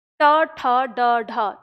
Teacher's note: मूर्धा वो स्थान है जहाँ पे आप ट का उच्चारण करते हैं